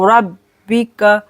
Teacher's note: आता, नून साकिन का इख्फा करेंगे, आता में ज़िक्राहा इला रब्बिका, रब्बिका मोटा पढ़ेंगे, बा पर जमाव करेंगे